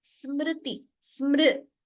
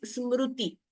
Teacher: So when you say r, smriti, amritam, there r should be heard, not u, not ru. So that ru, we should not pronounce it as amrutam.